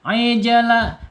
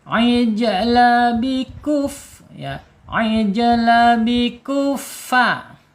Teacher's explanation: Kalau jim itu udah mantul secara hakiki ya, karena tertahan dia asidah ya, asidah suaranya tertahan ketika diucapkan. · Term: qalqalah sughra